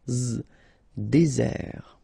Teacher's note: Désert, okay, remember, final T not pronounced, désert, and really this z sound just because you get one S between the two vowels